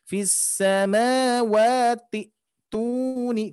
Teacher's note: Jadi untuk cara bacanya langsung ke hamzah yang kedua, bukan hamzah wasolnya. Hamzah wasol ketika diwasolkan dia tidak dibaca atau diabaikan. Maka dari itu langsung ke hamzah sukun ini.